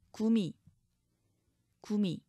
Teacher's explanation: 기역 디귿 비읍 모음 앞에서는 gdb 즉 유성음으로